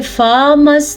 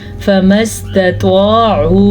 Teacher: फा को लंबा नहीं करना क्योंकि फा के ऊपर ज़बर है। अगर इसको हम पढ़ेंगे फामस तो हमने फा पे खड़ी ज़बर डाल दी, फिर तो हमें सवाब के बजाय गुनाह हो जाएगा क्योंकि हम लफ्ज़ की कंडीशन ही चेंज कर रहे हैं।